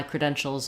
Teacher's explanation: like I'm going right from the sh to the L shows not a lot of stress or time on that schwa there